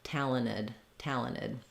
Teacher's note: want talented you can hear that doesn't sound quite quite right if we do make a change in talented it's that we just leave that t off entirely